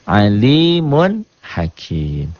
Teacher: dibacanya jelas tanpa ditahan tanpa ditekan tanpa dengung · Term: izhar